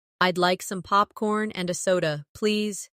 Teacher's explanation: In natural rhythm, and a becomes anna.